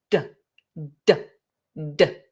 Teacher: we create pressure, d, and then we release the pressure